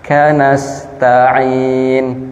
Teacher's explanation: nas bertemu dengan sin yang dia memiliki desis